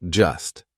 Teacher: Just is followed by come, so that T is in between two consonants. It's in between the S and the C of come. So we're going to make it silent. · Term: silent T